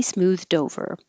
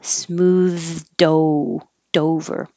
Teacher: your tongue goes out for the th smooth and then up for the d but now the d will connect to the o